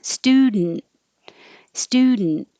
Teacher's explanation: stood put your tongue in the d in the n position the d the t and the n are all made in exactly the same place so you're putting it behind your top teeth and making in noise student student this stu is oo which